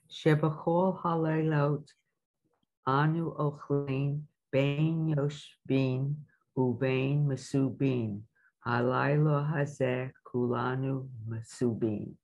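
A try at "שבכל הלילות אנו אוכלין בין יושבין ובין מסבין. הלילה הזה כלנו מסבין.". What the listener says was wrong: Nice. Very beautifully read.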